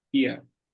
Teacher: Fia, aqui a gente tem então o V com som de F, Fia, e esse R no fim puxando para o A de novo